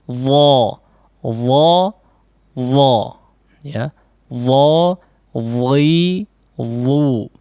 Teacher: huruf dha tidak ada hembusan udara yang deras